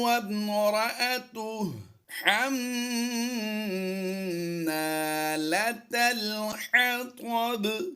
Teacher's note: میم مشدد میں غنہ آنے کی آواز دینی ہے